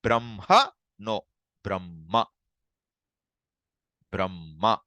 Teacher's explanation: you keep the hakara silent and the following consonant you emphasize. · That ma is emphasized. The ha is dropped pretty much.